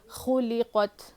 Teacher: خا کو موٹا پڑھنا ہے